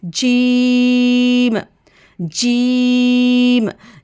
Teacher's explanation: जीम को हमने ज़ुबान के दरमियान से, यानी कि लिसान के मिड से हमने अदा करना है।